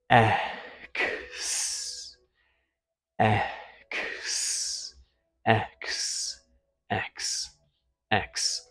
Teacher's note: you're going to have a little k as the back of your tongue trips the air against the soft palate.